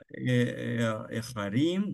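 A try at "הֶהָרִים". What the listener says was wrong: Эгарим, да, поскольку здесь второе тяжелее, то здесь меняется. Эгарим.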